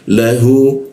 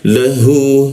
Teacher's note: Lahu, la bawah hidung masuk ke ha tenggorokan bagian bawah. Lahu, hu-nya panjang ya, kita tanjangan 2 harokat dia